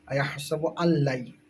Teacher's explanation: নুন সাকিনের পরে ইয়া আইসে, গুন্না করতে হবে। ইদগামে মাআল গুন্না।